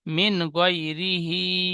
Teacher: হার নিচে খাড়া জের এসেছে, খাড়া জের ইয়া মাদ্দার সমতুল্য, সুতরাং ইয়া মাদ্দার মতো খাড়া জেরকে এক আলি পরিমাণ টান দিয়ে পড়তে হয়।